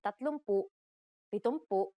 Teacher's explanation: if a p follows the NG connector then it becomes an m